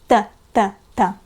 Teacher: T, the pronunciation of this letter is kind of like the English T, but it's much less aspirated. The tongue is flat and put forward, so the tip of the tongue touches the upper teeth.